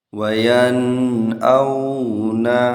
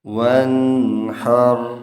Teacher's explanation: نون اپنے مخرج سے بلا کسی تغیر اور غنہ کے ادا کیا جائے گا۔ اس اظہار کو اظہار حلقی کہتے ہیں۔